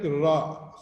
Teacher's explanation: you produce the r sound, you can yourself see that your tongue is vibrating, trying to touch on the upper lip and open and close kind of thing. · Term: trill